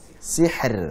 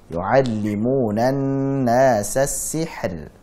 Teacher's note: Nah, kalau ini tipis ya. Ra sukun, sebelumnya kasrah, tipis.